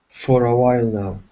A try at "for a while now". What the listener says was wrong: Okay, instead of for, make sure that your tongue does not touch the top of your mouth. For a while now.